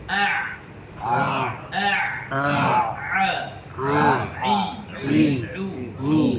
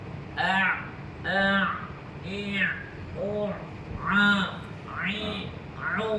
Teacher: huruf Ain tengah-tengah kerongkung Dekat mana tengah kerongkung pada bahagian injap suara kita ha pada bahagian injap suara kita yang dikepitkan ke ke bahagian